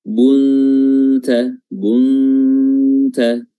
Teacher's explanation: Dan makhraj huruf ta sangat dekat sekali dengan makhraj huruf nun, ya. Kalau makhraj huruf nun itu ujung lidah bertemu dengan langit-langit depan atau gusi, adapun huruf ta, ya, di depan sedikit bertemu dengan pangkal gigi seri atas. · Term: ikhfa